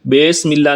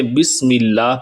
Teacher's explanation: یہاں پہلا حرف با ہے جس کے نیچے زیر ہے، با سے بی ہوتا ہے، با سے بے مجہول انداز میں نہیں پڑھیں گے، بسم اللہ نہیں کریں گے بلکہ بسم اللہ پڑھیں گے۔